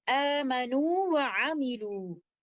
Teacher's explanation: واو مد کو مد طبیعی کے 2 کاؤنٹس کے ساتھ پڑھتے ہوئے اور بعد میں آنے والے لیٹر واو کو بھی اظہار کے ساتھ ادا کرتے ہوئے ان الفاظ کی ادائیگی ہم اس طرح سے کریں گے، آمنوا وعملوا۔